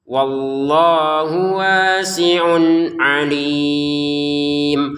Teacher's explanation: Wallahnya kita baca dua harakat. Hunya langsung ke wau ya enggak ada panjang.